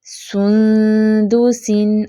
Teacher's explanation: اب سین کے لیے آپ نے ہونٹ گول کرنے ہیں، لیکن جب اخفا پہ آنا ہے تو فوراً سے ہونٹ سیدھے کر لینے ہیں